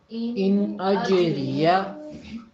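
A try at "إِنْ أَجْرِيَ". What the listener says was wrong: آپ نے حروف اقلاب پڑھے تھے، اس میں جیم شامل ہے کہ نہیں ہے؟ شامل ہے نا. تو ان اجریہ کیا بنے گا؟ سب آدھی آدھی آوازیں تھیں اور دو بیچ میں جزم تھے. اب آپ دیکھیں کہ ان اج ری یا ہر ایک حرف جو ہے وہ پورے کا پورا ادا ہو رہا ہے، بیچ میں سے ہم کوئی حرف چھوڑ نہیں رہے.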